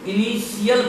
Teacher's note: टी के बाद IA आने के कारण तालव्य श उच्चारण हो गया